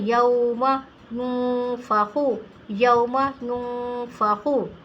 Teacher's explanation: فا جو ہے حروف اخفا کا ایک لیٹر ہے، تو اس لیے ہمیں اس کو ناک سے پڑھنا ہے